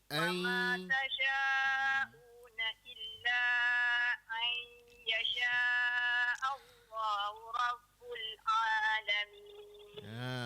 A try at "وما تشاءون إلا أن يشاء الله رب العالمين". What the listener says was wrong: Huruf ain tu kadang-kadang huruf hamzah jadi huruf ain. Kalau huruf ain dia nak jadi huruf hamzah pula. Kena jaga ya. hamzah ain tadi ni jangan ain ya. Kalau ain ain. dia kena jaga makhraj huruf ain ya.